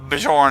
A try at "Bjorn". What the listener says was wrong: The J is pronounced like a Y, so it's Bjorn.